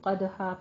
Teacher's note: تو دو زبروں پر ہم وقف کس طرح کریں گے؟ اس کو الف مدہ سے بدل دیں گے، یعنی وقف ابدال کریں گے۔ قدحن میں قوف کو پر پڑھنا ہے، دال کے اوپر قلقلہ کرنا ہے۔